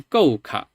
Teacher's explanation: it sounds like a 3x chain where it's falling and then low